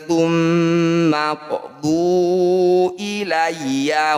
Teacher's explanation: jadi pantulan huruf q ini jangan berlebihan cukup dialirkan saja karena qqalahnya berada di tengah bacaan atau di tengah ayat kalau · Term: qqalah sugro